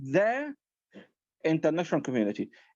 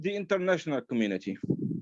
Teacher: كلمه ذا لما يجي بعدها vowel sound ننطقها ذي